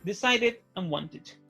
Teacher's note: si el sonido final antes del ed es una D o una T, el ed ending se pronuncia como id